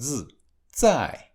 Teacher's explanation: Z is pronounced like Z, 在. The tip of the tongue is behind the upper teeth.